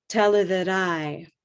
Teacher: Notice that I'm not saying tell her that I, or tell her that I, yeah? We're linking and connecting these words into one small word.